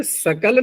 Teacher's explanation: जैसे बिहार में श को दंत हो या मूर्धन्य हो सभी को दंत सकार बोल देते हैं।